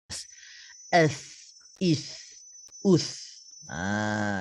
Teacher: Ingat untuk huruf tha ini, kita kena keluarkan sedikit hujung lidah kita ni. Merapati gigi seri atas.